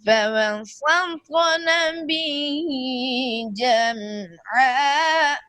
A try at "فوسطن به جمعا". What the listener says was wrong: جم عین کو صاف کرو، میم ساکن کے بعد عین کو صاف کرو.